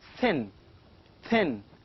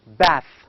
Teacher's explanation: it is a voiceless dental sound · of this word thin thin and the final sound of bath you can feel that the tip of the tongue your tongue touches the upper teeth